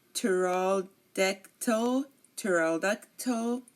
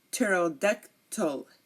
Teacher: Okay, we do not pronounce the P here. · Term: silent P